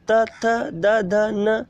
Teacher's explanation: इसमें देखो आपकी जीभ जो है वो दांतों में टक्कर मार रही है। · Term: दंत्य